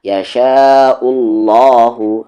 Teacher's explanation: اسی ورڈ میں ہے تو اسے کھینچنا ضروری ہے، یشاء، اور یہ لام ہیوی ہوگا اللہ کا لام کیونکہ اس سے پہلے پیش ہے